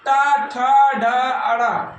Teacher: ये सब किससे बोला? मूर्धा से। उच्चारण कैसे करते हैं? मूर्धा से।